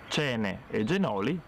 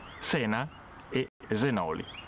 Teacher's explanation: E la c e la g originaris vanno a mudare in una sibilante, in una S